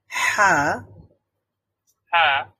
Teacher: থেকে হা উচ্চারিত হয় তো হলক মানে হচ্ছে গলা বা কণ্ঠনালী কণ্ঠনালীর মধ্যভাগ থেকে উচ্চারণ করতে হয় আর হা উচ্চারণ করার সময় একটু স্ট্রেস তৈরি করতে হয় একটু